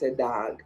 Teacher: one of the frequent differences you see between english and jamaica is that the english o becomes a jamaican a